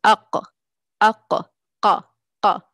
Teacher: innermost part of the tongue with what corresponds to it from the upper soft palate produces हुर्फ़ क़ाफ़